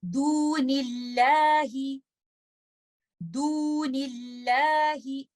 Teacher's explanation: اللہ سبحانہ و تعالیٰ کے نام سے پہلے کسرہ ہے تو آپ اس میں لام کو لائٹ کر دیں گے